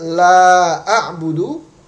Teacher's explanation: itu dibaca 2 harokat, walaupun seharusnya karena mad jaiz itu seharusnya dibaca 4 harokat. Maka ketika membaca tersebut kita tetap dibenarkan ya, walaupun 2 harokat.